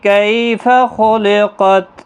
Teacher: کسی بھی حرکت والے حرف کو کھینچنا نہیں، کئی یالین ہے، خا مستعلیہ ہے، قاف بھی مستعلیہ ہے، پر پڑھنے ہیں